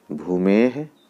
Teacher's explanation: विसर्ग के पहले अगर ए हो तो उसका उच्चारण हे जैसा होता है